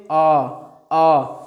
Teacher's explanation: जैसे आप अ का उच्चारण करोगे ना, बीच आपका जिह्वा जो है एकदम बीच में जाएगी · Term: मध्य स्वर